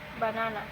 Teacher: For example, in the word banana, the second syllable is stressed